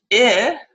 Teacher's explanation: it's the high front LAX unrounded vowel